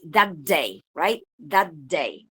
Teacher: The first one ends with the voiceless alveolar plosive, and the second one begins with the voiced alveolar plosive.